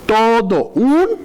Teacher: en este caso tenemos una o Y tenemos una u entraría un diptongo